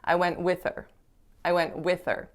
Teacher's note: they're going to reduce her by totally eliminating the h so instead of her you're going to hear er but it's going to not be so obvious because it's going to be shorter